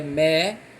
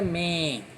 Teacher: É a elisão, quando existe uma palavra que termina com M, com M. Esse M, pessoal, ele tem o efeito de produzir um som nasal, né? Uma coisa é mé, outra coisa é men.